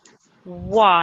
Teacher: the way we pronounce it is like a W. So we shouldn't hear any V sound, no V sound. It's just wa, like a W.